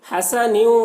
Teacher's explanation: تنوین کے بعد حروف یومین میں سے واو ہے، تو تنوین کو واو سے ملا کر غنہ کے ساتھ پڑھیں گے، اس کو ادغام ناقص کہتے ہیں۔